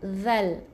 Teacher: Zal, lidah keluarkan, nipiskan di hujung lidah ada angin yang keluar. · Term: huruf zal